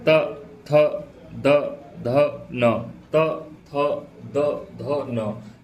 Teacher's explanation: त थ द ध न, त थ द ध न, क्योंकि त थ द ध न ये जो है ये दंत वर्ड है। इनमें आप देखिए आपकी जीभ जो है वो दांतों से टकरा रही है।